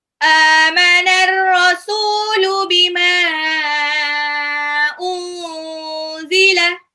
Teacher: Unzila nun sukun ketemu zai itu ikhfa